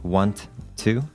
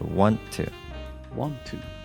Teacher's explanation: we just have another stop T sound at want to. We don't say both of the T's